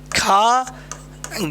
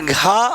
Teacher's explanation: जिन व्यंजनों को बोलने में हवा की जो मात्रा होती है वह अधिक होती है उसे कहते हैं हम महा प्राण व्यंजन क्या कहते हैं महाप्राण व्यंजन कहते हैं तो जानते हैं कौन